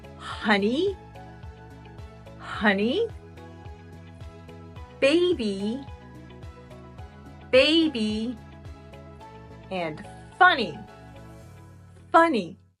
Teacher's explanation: at words where the Y sounds like a vowel the Y sounds like a long e